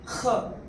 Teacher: ख from the एपिग्लटिस